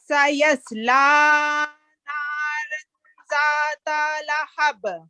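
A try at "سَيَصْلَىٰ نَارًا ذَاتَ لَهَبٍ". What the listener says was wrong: ज़ाता नहीं, दोबारा सुने गौर से। सयस्ला नारन ज़ात लहब। ज़ात टच देना सिर्फ। अब ज़ा को आपने पुर कर दिया। ज़ात अपनी ज़बान का सिरा ऊपर के दांतों के अंदर टच करे। ज़ात कैसे?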